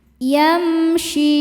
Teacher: Yam ada idhar syafawi karena mim sukun berhadapan dengan selain mim dan ba yaitu shin. Cara bacanya mim dibaca dengan jelas.